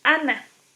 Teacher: aquí conserva totalmente ese fonema ideal, nasal alveolar